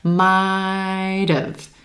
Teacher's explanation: When we contract this combination, it sounds like might have. Sounding like a two-syllable word, emphasis on the first syllable and the I as in white